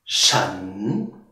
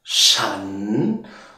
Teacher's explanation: Steigender Ton, ja, steigend. Shan, ja, du beginnst tief. Shan, und dann geht deine Stimme nach oben